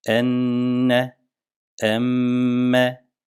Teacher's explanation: şeddeli Mim ve nun harfleri diğer harflere göre biraz daha fazla tutulurlar ve gunneli olarak okunur gunne demek sesi genizden çıkarmak yani geniz nedir Burun boşluğu dur · demek sesi genizden çıkarmak yani geniz nedir Burun boşluğu dur yani burun boşluğundan çıkararak diğer şeddeli harflere göre biraz daha fazla tutacağız